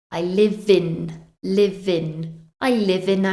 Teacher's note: we have the final V in the word live joining with the I from in I live in Liv in I live in a